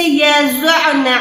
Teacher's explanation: حتی یضعن حملہن، سیم طریقے سے یضعن، عین کو حلق درمیان سے نکالیں، نون مشدد پہ سٹاپ کر رہے ہیں تو لمبا کر کے گننا کریں